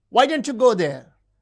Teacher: The high fall in WH question refers to surprise.